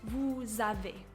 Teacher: You'll also notice with this example that the S is not pronounced S, it's actually pronounced Z. So it's important to know that when you have an S that is being used for a liaison, it's going to have the Z sound.